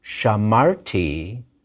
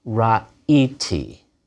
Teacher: In the first and second persons, where the strong verb has that patach, the he of a third he root reverts to its original self, a yud. So instead of an a and a consonant, we just have a long vowel e. Shamarti, but ra'iti.